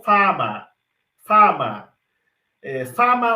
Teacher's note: eles não tendem a fazer como a gente faz que é nasalizar a vogal que antecede um fonema nasal